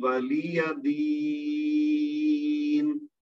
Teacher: اچھا دین میں اب یہ ہے کہ یا ساکن ہے اس سے پہلے زیر ہے تو یا مد بنی 2 حرکت تک کھینچ کے پڑھنا چاہیے, لیکن چونکہ آگے آیت ختم ہو رہی ہے اور نون کے نیچے جو زیر ہے وہ گر جائے گی, جب ہم یہاں رکیں گے تو نون ساکن ہو جائے گی, اور نون ساکن کی وجہ سے یہ جو یا مد ہے یہ مد عارض یعنی لمبی والی مد بن جائے گی. تو اس طرح سے ان 2 آیات کو, یہ جو پہلی 4 آیات تو ماشاءاللہ بہت اچھی پڑھ دی تھی, آگے والی جو 2 آیات ہیں یہ میں پڑھ دیتا ہوں آپ کے لیے.